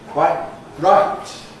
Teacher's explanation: Or you can replace the /t/ with a glottal stop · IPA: [ˈkwaɪʔ ˈraɪt]